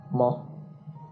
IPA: m